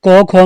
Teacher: अब क ख में देखो तो ख दूसरे नंबर पे आता है, ये महाप्राण है